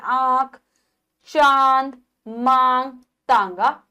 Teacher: जब हम इनका उच्चारण करते हैं तो वायु नाक और मुंह दोनों से निकलती है। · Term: अनुनासिक